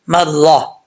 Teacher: وقف کی صورت میں تا کو ہا سے چینج کر دیں گے، ہا کو ساکن کر دیں گے۔ کیسے؟ مرہ، را کے اوپر زبر ہے تو را پر پڑھا جائے گا۔ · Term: گول تا